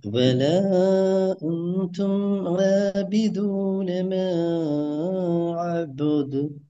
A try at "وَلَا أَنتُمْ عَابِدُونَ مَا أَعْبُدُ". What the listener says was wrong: போது அந்த சவுண்ட் இல்லாம போகுதே பின்னால. நீங்க நீட்டுறீங்க ஓகே. அலிஃபுக்கு வந்து கட்டாயம் என்ன செய்யணும், மேவ நீட்டினா அந்த சவுண்ட் எடுக்கணும். அந்த இடத்துல கெப் எடுத்து அந்த எடுத்துக்கணும்.